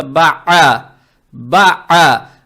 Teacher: Далее следует буква айн, гортанная с фатхой. Здесь фатху надо произносить как гортанный звук а.